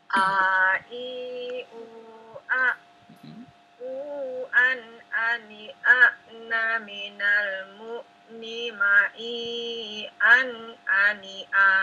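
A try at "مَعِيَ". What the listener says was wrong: Kepanjangan ma'i-nya. Ma'i an ani a. Ma'i-nya kepanjangan. Ya, ulangi.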